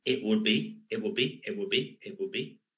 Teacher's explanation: the t is elided